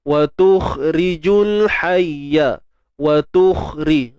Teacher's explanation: Huruf kha ni bersifat isti'la. Jadi kita kena tebalkan dia. Jangan watukh.